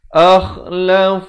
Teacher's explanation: lafz jalalah di sini dibaca tebal 2 harakat